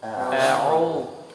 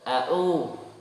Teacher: jangan sampai ainnya seperti hamzah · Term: huruf ain